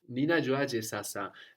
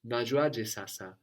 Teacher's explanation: being a fixed expression, it's very common to drop the ni